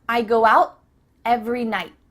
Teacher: your tongue is at the top of your mouth you're about to make the T sound but no air goes through so it's just stopped at the top of your mouth